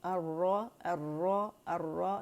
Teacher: نون کے ساتھ گم برج، جہاں تالو کی سائڈ پہ گم برج اینڈ ہوتا ہے، تالو کی سائڈ پہ را کا مخرج ہے